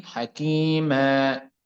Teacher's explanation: الوقف على التنوين بالفتح يكون بألف، ويسمى ألف مد عوض